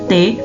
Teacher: Udara dihentikan di belakang gigi atas oleh ujung lidah, kemudian dilepaskan